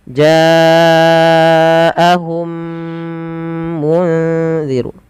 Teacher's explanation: memasukkan mim pertama kepada mim kedua dan ditahan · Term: idgham mimi